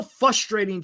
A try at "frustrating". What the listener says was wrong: did you say frustrating or frustrating? With an R? Frustrating. I think you said fustating. I want to hear that R.